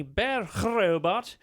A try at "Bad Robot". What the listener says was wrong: Is that how it's pronounced now? Yeah, was that a rolled R? It sounded like it was in the back. Oh, I thought you did more of a bad robot, like it's in the back of your throat.